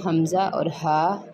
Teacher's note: ये जो 2 हरूफ हैं ये अक्साई हलक यानी हलक के आखिरी हिस्से जो सीने की तरफ है वहाँ से अदा होते हैं